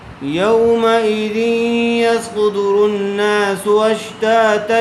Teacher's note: صاد کو پر کر کے پڑھیں گے اور سین کو سختی کے ساتھ ادا کریں گے